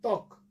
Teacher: হসটা না দিলে কিন্তু ত্বক একটা অটা, যদিও কিন্তু মজার ব্যাপার দেখো, এই ত্বক এর নিচে কিন্তু এর মধ্যে একটা অধ্বনি আছে, কিন্তু আমরা উচ্চারণের সময় কিন্তু সেই অটাকে বাদ দিয়ে উচ্চারণ করি